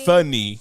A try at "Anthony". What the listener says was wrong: You forget the TH in there.